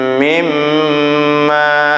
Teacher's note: karena mim ber tasydid panjangnya guna biqadril harakata ini sekira-kira atau seukuran dua harakat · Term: gunah